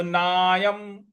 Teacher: ना के बाद य पर जो अनुस्वार है उसका उच्चारण हमें म ले आना है